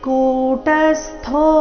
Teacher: ಥೋ ಮಹಾಪ್ರಾಣ ದೀರ್ಘ ಇದೆ